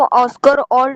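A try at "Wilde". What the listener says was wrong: वाइल्ड, वाइल्ड, ओल्ड नहीं, WILD, wild to Urdu शायरी, शायरी को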